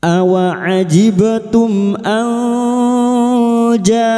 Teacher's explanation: Nun sukun atau tanwin yang bertemu dengan 15 huruf ini termasuk huruf jim. Maka bunyi nun sukun disamarkan dibaca samar dan mendengung selama tiga harakat. Pada saat menyamarkan bunyi nun sukun, kita sudah siap untuk membunyikan huruf jim. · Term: Ikfa hakiki